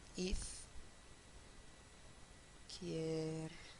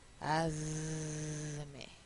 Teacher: se asimila en la sonoridad a la consonante siguiente, igualito que la S.